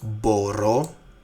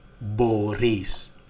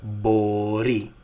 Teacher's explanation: the stress on the last word ending, on the last syllable